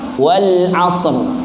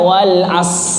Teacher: Nah, sering sekali huruf akhir dihilangkan. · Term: hilang huruf